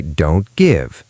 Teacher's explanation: If we say don't give, the T gets stopped. It's hard to say don't to give.